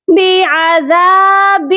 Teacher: اقلاب کا مطلب ہوتا ہے بدلنا۔ یہاں پر اقلاب کا قاعدہ لگے گا اور ہم منہ کو بند کر کے غنہ کریں گے۔